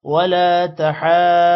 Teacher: لام کے بعد الف ہے تھوڑا سا لمبا کریں گے تحاضون ہا پر کھڑی زبر ہے اور مد بھی ہے اور بڑی والی مد ہے جس کی وجہ سے تقریباً 5 سیکنڈ ہا لمبا ہوگا اور ہا ضاد کے ساتھ بھی ملے گا کیونکہ ضاد پر · ضاد موٹا ہوگا ضاد کے بعد واو ہے جس کی وجہ سے ضاد واو کے ساتھ ملے گا